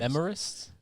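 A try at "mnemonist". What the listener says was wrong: there's an N in there. it's MN. It's like you typed it right, but there's an N in there.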